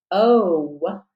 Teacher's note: O has a closing sound of the w to be that clear long vowel